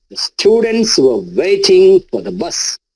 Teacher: the were for the these are weak forms structural words those are unstressed